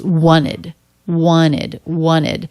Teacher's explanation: when it comes after T or D, it's the I as in sit vowel and the D sound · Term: ED ending